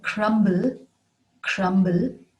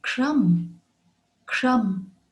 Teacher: we would pronounce the b in crumble crumble but leave it out in crumb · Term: silent b